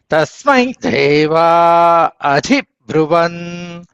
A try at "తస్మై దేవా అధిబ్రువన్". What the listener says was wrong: అబ్రువన్ నకారం కూడా చెప్పాలి అధిబ్రువన్